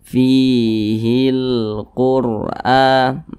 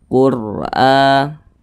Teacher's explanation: huruf ra sukun yang sebelumnya ada huruf yang memiliki tanda baca dhammah, maka huruf ra-nya dibaca tebal, dibaca tabkhim